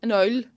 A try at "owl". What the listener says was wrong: You're saying... An owl? Nobody in this country says owl. Like, you've made that word a sentence. Owl. You've made way more of that word than it deserves.